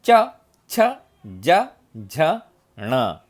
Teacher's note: च यानी तालव्य, यानी जीभ जो है अपने तालु को टच होती है, तो उसको बोलते हैं तालव्य वर्ण, यानी च, छ, ज, झ, ण।